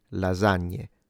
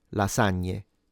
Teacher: Z is actually using my vocal cords. S, it's not.